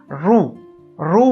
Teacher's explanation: वर्ण उच्चारताना शेंडा मूर्धेला जाऊन भिडत असतो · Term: मूर्धन्य